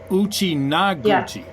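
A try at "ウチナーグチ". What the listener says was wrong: Yeah, it's a long A in the middle, that's all.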